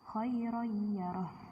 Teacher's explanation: fathah tanwin bertemu dengan ya, jadi langsung kayak masuk ke huruf berikutnya